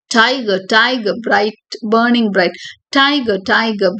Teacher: இதுல ஸ்ட்ரெஸ்ட் அன்ஸ்ட்ரெஸ்டா வரும், 4 times per line வரும். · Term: ட்ரோகாயிக் டெட்ராமீட்டர்